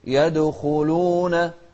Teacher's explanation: الدال دائما قلنا إذا كانت ساكنة تكون من أحرف القلقلة